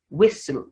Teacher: the s is not changing to z